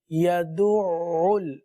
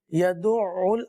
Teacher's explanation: یدعو اس کلمے پر غور کیجئے، یہاں پر عین ہے اور عین پر تشدید ہے، تشدید کی وجہ سے یہ 2 مرتبہ پڑھا جائے گا، یدعو، اور عین کی آواز جاری رہے گی۔